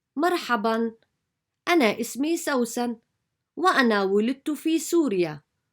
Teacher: short and long vowels in Arabic becomes less and less obvious so you can hardly spot the prolongation associated with the long vowels